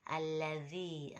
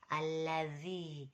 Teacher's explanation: Jadi ujung lidah bertemu ujung gigi depan yang atas.